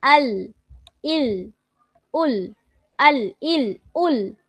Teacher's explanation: জিহ্বার আগার কিনারা সামনের উপরের দাঁতের মাড়ির সঙ্গে লাগিয়ে উচ্চারিত হয়। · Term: লাম